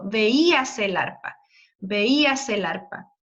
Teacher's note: yo creo que es un hiato, porque el acento de la I es muy fuerte